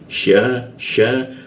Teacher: huruf sya posisinya di tengah lidah dia.